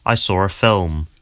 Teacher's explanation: So you can hear that there's an R sound connecting saw and ah. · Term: intrusive R